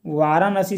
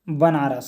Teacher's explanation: जो मूर्धनी न है वो दंत न में परिवर्तन हो जाता है